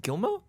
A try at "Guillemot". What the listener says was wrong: Guillemot. L's and the T. Guillemot. Guillemot. It's Guillemot.